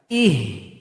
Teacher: H-nya besar keluar dari tenggorokan paling bawah.